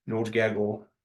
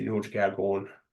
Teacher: In Curve Lake, we're more likely to have an N on Gagon